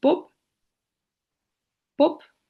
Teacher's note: This means that the phonemes in word final position are typically devoiced, so b becomes p when it occurs in word final position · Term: final devoicing